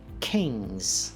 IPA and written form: kɪŋz (King's)